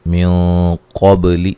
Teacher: یہاں نون ساکن کا موٹا اخفا ہے۔ قب قاف کو موٹا ادا کریں گے، با پہ قلقلہ کریں گے۔